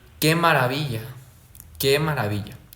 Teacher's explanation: Primero sube y luego baja, como pueden ver. · También tenemos la entonación en oraciones exclamativas, que comienzan con una fuerte subida y luego se descienden completamente